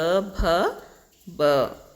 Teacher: ಭ ಅನ್ನೋದು ಮಹಾಪ್ರಾಣ ಯಾಕಂದ್ರೆ ಉಚ್ಚರಿಸುವಾಗ ಹೆಚ್ಚು ಉಸಿರು ಹೊರ ಬರ್ತಾ ಇದೆ ಹಾಗಾಗಿ ಇದನ್ನ ನಾವು ಮಹಾಪ್ರಾಣ ಅಂತ ಕರೀತೀವಿ ಐದನೇ ಪ್ರಶ್ನೆ ಅನುನಾಸಿಕ ಅಕ್ಷರ ಯಾವುದು